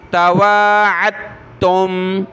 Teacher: دال اور تا جمع ہو جائیں تو دال ساکن ہو تو اس کو چھوڑ دینا ہوتا ہے، تا کو پڑھنا ہوتا ہے